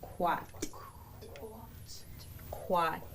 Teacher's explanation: going to force that sound quat quat also the reminder that this K is coming from the front of our mouth quat quat now we have our glottal stop at the end